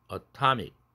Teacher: 그럼 atom 할 때는 t가 뒤에 양모음이니까 t가 플랩 사운드가 돼서 atom이 아니라 atom 됐는데 액센트 위치가 뒤에 강모음으로 바뀌었네요. 뒤에 모음에. 그렇게 되면 플랩이 될 수가 없어요. 고로 atomic이 되지 aramic이 되지 않습니다.